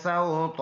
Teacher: را پر ہے با جماؤں کے ساتھ، یہ کاف ہے، اوپر زبر ہے۔ سین سیٹی حرف ہے، اور اس کے ساتھ وا کو ملائیں گے، یہ واولین ہے۔